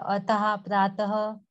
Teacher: विसर्ग इसका उच्चारण ह के समान होता है